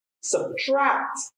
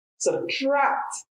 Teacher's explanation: And the stress in the second syllable because it's a verb. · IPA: / səbˈtrakt /